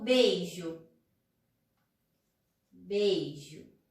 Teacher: O ditongo, as vogais ficam juntas, tá? São 2 vogais na mesma sílaba.